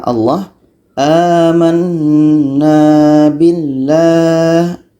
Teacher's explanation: Setiap kita menjumpai, setiap kita temukan lafaz Allah, kita panjangkan 2 harakat la-nya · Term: lafaz jalalah